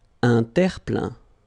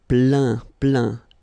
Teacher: Remember this E-I-N nasal. So it goes in your nose